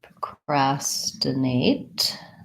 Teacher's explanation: so we have second syllable stress on this procrastinate